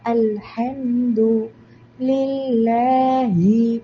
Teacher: ഇസ്മ് ജലാലയാണ് നമ്മൾ അള്ളാ ഉയർത്തി ഉച്ചരിക്കുന്നില്ല ലാമിനെ താഴ്ത്തി ഉച്ചരിക്കാൻ കാരണം അള്ളാന് തൊട്ടുമുമ്പ് ലാം വന്നിട്ടുണ്ട് അതിന് കസറാണ് ലില്ലാഹി